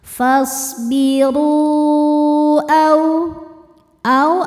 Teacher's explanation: Mad tabi'inya adalah waw sukun yang sebelumnya dhammah pada kata pertama yaitu fasbiru, sedangkan hamzahnya adalah a pada kata kedua yaitu au. Maka ro-nya ini kita panjangkan, boleh 4 boleh 5 harokat. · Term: mad jaiz munfasil